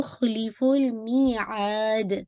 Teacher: ख्वा को हैवी रखिएगा, ली लाम की कसरा शार्प रखिएगा, फुल लाम पे अगेन बाउंस नहीं कीजिएगा , मी को आपने टू काउंट पढ़ना है, या मत दिया